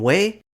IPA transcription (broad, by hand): we